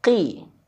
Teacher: Nah, di sini waidza qi kalau dia kasrah maka tebalnya dia berkurang. Makanya ada istilah tafhim khofifi tebal tapi ringan.